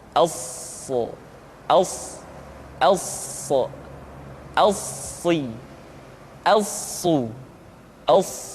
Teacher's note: Untuk memudahkan pengucapan huruf sa, Perhatikan sifat as-safir yang dimiliki oleh huruf sha, yaitu suara tambahan yang terdengar menyerupai dengan suara angsa.